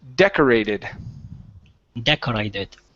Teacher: So the stress is at the very beginning.